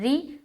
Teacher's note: را کو باریک رکھیں گے، را کے نیچے زیر آ گیا تو باریک ہوگی